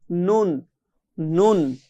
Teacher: জিহ্বার আগা একদম আগায় চলে আসলাম, এখন এই আগাটা তার বরাবর উপরে তালুর সাথে, জিহ্বার উপরের যে অংশ এই তালুর সাথে লাগিয়ে নুন। নুন জিহ্বাটা কিন্তু উপরের তালুর সঙ্গে লাগতেছে আর লাগেই কিন্তু এই নুনটা উচ্চারণ হচ্ছে।